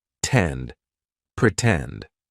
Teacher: In the word pretend, the stressed syllable starts with T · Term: true T sound